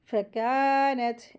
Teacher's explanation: کاف کے ساتھ بھی الف مد ہے، اس کو 2 حرکت کھینچ کے پڑھیں گے